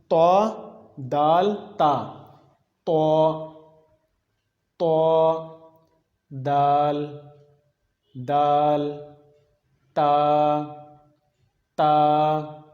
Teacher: پہلا مخرج یہ ہے رأس اللسان کا، زبان کی نوک جب سامنے والے اوپر کے 2 دانتوں کے جڑ سے لگے گی تو وہاں سے ادا ہوگا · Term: حروف نطعیہ